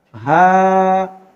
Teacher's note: ہاں کے اوپر زبر اور اس کے بعد الف مدہ ہے، ہاں کو کھینچ کر پڑھیں گے